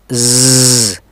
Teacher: अपने हाथ को गले पर रखिए और की साउंड प्रोड्यूस करें आपको एक वाइब्रेशन सी महसूस होगी यह वाइब्रेशन इसलिए है कि वोकल कॉर्ड्स वाइब्रेट कर रहे हैं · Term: वॉइड साउंड